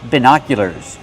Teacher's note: Put the stress on the second syllable.